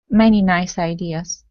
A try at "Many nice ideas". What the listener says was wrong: That's it. That's the sound. Good.